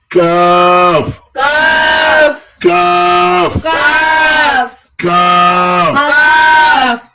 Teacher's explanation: কা এটা গলার মধ্যে যাবে না